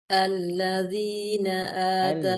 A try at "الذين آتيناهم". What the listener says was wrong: Alladzi. Lebih tipis. Alladzina. Tipis tai. Lebih tipis tai. Tai. Alladzina. Alladzina ataina.